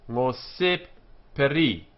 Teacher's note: Ngose, accented on the penult here, because it is very closely followed by a monosyllable, which is this one here.